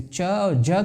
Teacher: زبان کا پھل اگر سخت تالو سے رابطہ قائم کرتا ہے تو اس کو تالوی کہتے ہیں